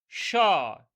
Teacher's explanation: ঘর্ষণ সহযোগে উচ্চারিত হয় এবং শীষ দেওয়ার মতো করে উচ্চারিত হচ্ছে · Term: উষ্ম ব্যঞ্জন ধ্বনি